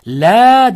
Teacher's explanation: Ye so'zda kelib, o'zida hech qanday belgi bo'lmasdan, undan oldingi fathalik bo'lsa, mad tabiiy bo'ladi. Shunda bu la deb ikki harakat cho'ziladi.